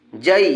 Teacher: زبر ہے، اس لیے یائلین ہوگی، یائلین کو نرم آواز کے ساتھ جلدی پڑھیں گے